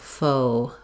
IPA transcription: oʊ